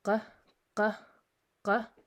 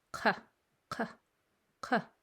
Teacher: a back sound coming from the very back of your mouth, and this is a muscle that we don't use when speaking the English language. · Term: back sounds